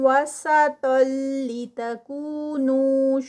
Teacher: تاؤں وسطل تو ہیوی اور پھر ادغام ہے، تنوین ہے یہاں پر ڈبل زبر اور یہ آگے لام کے ساتھ جوڑ رہی ہے، اور یہ جو ادغام ہوگا یہ وداؤٹ غنہ ہوگا